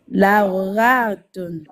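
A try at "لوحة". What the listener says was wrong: C'est pas ra. Ha. Ha. Halima. Ha. Halal. Par contre, ne prolonge pas, c'est pas hatun. Lauhatun.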